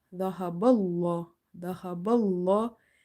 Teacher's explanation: Zal fatha dha, ha fatha ha, dhaha, ba, lam fatha bal, dhaha bal. And lam is heavy because there is a fatha before the letter lam in the word Allah.